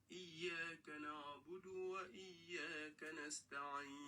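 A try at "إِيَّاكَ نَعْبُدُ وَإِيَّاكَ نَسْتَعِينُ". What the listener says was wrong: Au niveau de la prononciation des Aïn aussi, la première n'est pas bonne, mais la deuxième est bonne. Iyyaka na'budu, na'budu. Non, il ne faut pas dire na'budu. Vous le lisez comme kalkala. Iyyaka na'budu, na'budu.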